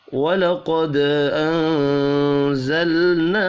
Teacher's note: दाल साकिन पर कलकला करना है